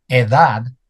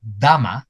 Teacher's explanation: For a Spanish speaker the speech sound /th/, which we think of as a th sound, it's just another version of the /d/. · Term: allophonic variation